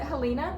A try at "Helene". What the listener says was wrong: Helene. No, it's an E at the end.